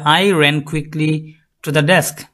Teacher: I unstressed because it's pronoun, ran stressed because it's the main verb, adverb, quickly, stressed, preposition to, unstressed, determiner or article, unstressed, and desk stressed because it's a noun. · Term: Sentence stress